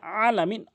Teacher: আইনটি হলকের মাঝখান থেকে চাপ দিয়ে উচ্চারণ করবেন